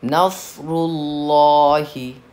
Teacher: यहाँ पे हमने लफ्ज़ अल्लाह नस्रुल्लाह के लाम को पुर पढ़ा है।